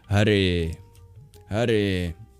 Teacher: And then there's the R, which is retroflex instead of the approximation we make in English, which means you curl your tongue back and you add breath to make it trill a little bit.